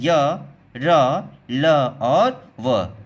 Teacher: ऐसे वर्ण जिनको जीभ और होठों के परस्पर सटने से बोला जाता है, लेकिन कहीं पर भी दोनों पूरी तरह से स्पर्श नहीं होते।